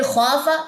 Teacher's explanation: خوا لمبا ہوگا، فا لمبا نہیں ہوگا